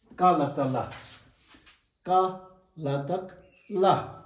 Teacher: So ka is not audible. La is audible, but it's high pitched.